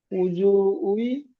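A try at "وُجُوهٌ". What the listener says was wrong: হুই পরিষ্কার বলুন, উজু হুই,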